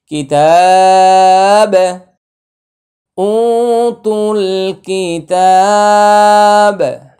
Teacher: উ তুল, কাফজের কি, তা খারা জবর তা, কিতাবা জবর বা, কিতাবা। এখানে আমরা একটা ওয়াকফ করব, তাহলে বায়ের উপরে জজম দিব, কলকলা করব,